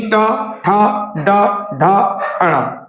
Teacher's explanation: टा वर्ग में जीभ ऊपर टच करेगी, मूर्धा बोला जाता है